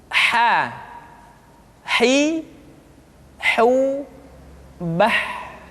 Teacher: Huruf ha dikeluarkan dari tengah-tengah tenggorokan. Tengah-tengah tenggorokan.